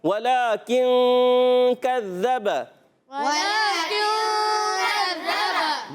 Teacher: با پر زبر آنے کی وجہ سے حرکتیں نہیں کھینچیں گے. با دونوں ہونٹوں کے تر حصے سے ادا ہوتا ہے · مگر ذال مشدد ضرور رک کر ادا کریں گے. ذال کا مخرج زبان کا سرا اوپر والے دانتوں کے کناروں سے, اندرونی کنارے بیرونی کنارے دونوں استعمال کر سکتے ہیں. · نون کو چھپا کر ایک الف کا غنہ ادا کرتے ہیں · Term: اخفاء غنہ